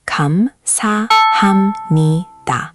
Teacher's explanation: Four syllables with emphasis on sa and ni